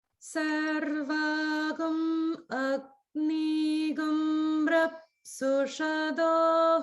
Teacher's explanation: So Rapsusha do, that do, it's upper swara.